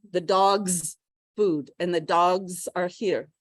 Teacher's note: if it's a dog, it's not an S, it's a Z